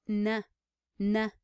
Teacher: the tongue goes right up against the teeth on that alveolar Ridge